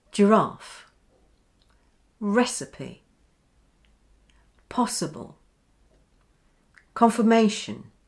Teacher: Did you notice here how confirmation has two schwas? One for the IR and the other for the ION spelling at the end. So IR becomes and ION becomes n.